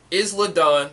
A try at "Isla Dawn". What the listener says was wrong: Isla Dawn. It's like Island. The S is silent.